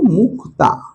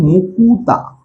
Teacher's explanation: যদি আমি বলি ধরো মুক্তা, উচ্চারণের সুবিধার্থে উচ্চারণটা হয় মুকুতা। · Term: মধ্য স্বরাগম